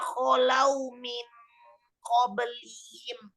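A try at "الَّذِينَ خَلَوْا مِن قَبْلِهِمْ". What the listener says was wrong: Dengungnya tebelin lagi. Jangan min qablihim.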